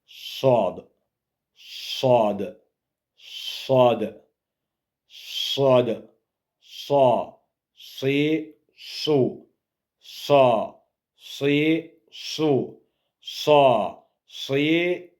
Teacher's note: Dilin ucunu aşağı kəsici dişlərin ucuna toxundurmaqla tələffüz edilir, qalın hərflərdəndir. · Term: sad hərfi